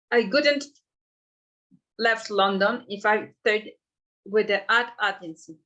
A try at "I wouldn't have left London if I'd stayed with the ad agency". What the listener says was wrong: Okay, but you need to pronounce the w as w, wouldn't. Wouldn't. I wouldn't have left London if I'd stayed with the ad agency.